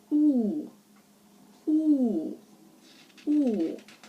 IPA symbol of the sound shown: u: